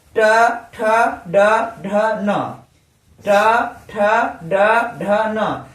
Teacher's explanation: ये सब मूर्धा, हमारा जिह्वा जो है ये मूर्धा से टकरा रहा है और मुख से वायु द्वारा निकल रहा है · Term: टवर्ग